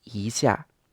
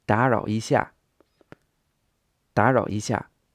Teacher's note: when a first tone comes before a fourth tone, it often changes to a second tone. So this would be more like 一 下.